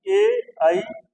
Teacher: इन दो वर्णों का उच्चारण स्थान कंठ और तालु है